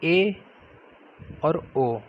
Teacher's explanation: अर्ध संवृत स्वर ऐसे स्वर होते हैं जिनका उच्चारण करने में मुख द्वार हमारा संवृत स्वर से कुछ अधिक खुलता है।